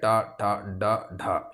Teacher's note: मुर्धा से ट वर्ग का उच्चारण होता है